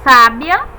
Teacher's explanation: temos a sílaba tônica sa